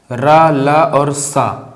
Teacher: रा, ला और सा, ये कहाँ से हो गए हमारे, इनको बताया था आपको दंत मूल, ये हो गया हमारे दंत मूल या फिर वर्त से, याद होगा आपको, दंत मूल या फिर वर्त से।